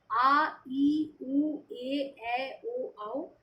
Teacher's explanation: दीर्घ स्वर के उच्चारण में ह्रस्व स्वर से दुगुना समय लगता है